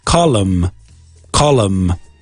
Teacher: But in English, there is no vowel after the N.